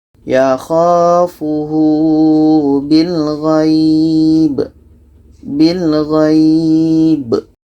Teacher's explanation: Ghai ini kita panjangkan, bi ini pendek, qalqalah ada pantulan.